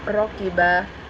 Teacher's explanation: karena ro bertanda baca fathah, maka harus dibaca tebal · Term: tafkim ra